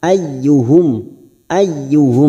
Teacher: mim sukun bertemu Hamza Idhar syafawi kita baca jelas · masuk pada huruf ya yang bertasdid hanya masuk tanpa ditahan lama-lama